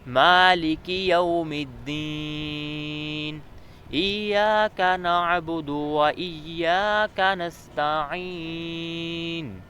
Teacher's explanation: ادھر مالکی میں بھی کاف باریک ہے، ایاک میں بھی باریک ہے، اور و ایاک میں بھی باریک ہے، موٹا نہیں ہے